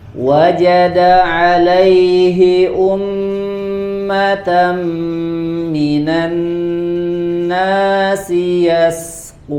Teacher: Minanna pada nun tasydid, ya, ada tambahan gunnah ditahan.